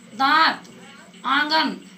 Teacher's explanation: अनुनासिक जो है नाक और मुंह दोनों से बोला जाता है।